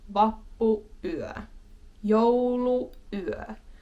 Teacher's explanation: you will have that tiny pause in the middle just because they're like two words. Christmas, little pause, night, even though it is one word.